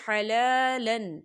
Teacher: جو ہے اکفا کا ورڈ ہے، تو یہاں پر اکفا ہوگا، ہم تنوین کی آواز کو ناک میں چھپائیں